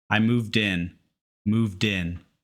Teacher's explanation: d or T and the next word starts with a vowel we connect the sounds and that d/t moves to the start of the next word